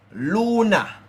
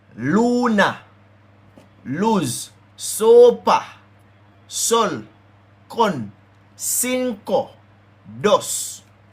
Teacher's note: because this part of it is stress, you hear that Lou, as if it have the accent mark on it